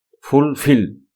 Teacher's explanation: fulfill is pronounced with more force on the second syllable. That is we say second level more strongly than the others fulfill.